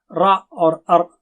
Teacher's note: را اور ار اگر آپ کہیں تو اس میں تکرار ہوتی ہے